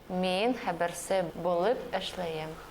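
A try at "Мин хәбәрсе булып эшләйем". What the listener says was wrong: Только ишлеем. И, внимание, вот типичная ошибка. На аффиксы предикативности ни в варианте «м», ни в варианте «м», ни в каких других вариантах никогда не падает ударение. Вообще никогда.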